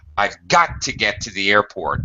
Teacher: So often you hear emphasis on got.